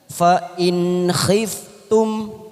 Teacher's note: kita baca jelas tanpa mendengung namanya bacaan idhar halqi